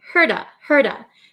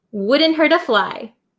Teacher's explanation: The T becomes a flap T, so it sounds like a soft D sound.